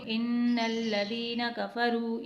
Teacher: اب یہاں پر واو مد آ رہا ہے تو اسے ایک حرکت کے برابر کھینچیں گے، کاف اور فا کو نہیں کھینچیں گے